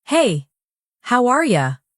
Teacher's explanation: with a high, cheerful tone, they're friendly. If they say it flat, "Hey, how are ya?" maybe they're bored or upset.